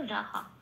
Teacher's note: বিসর্গটা প্রতিস্থাপিত হয়ে হ হয়ে হলো রাহা